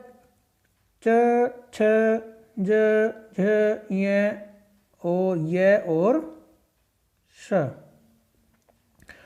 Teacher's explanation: ये सभी वर्ण तालु से बोले जाते हैं, इसलिए इन्हें तालव्य वर्ण कहते हैं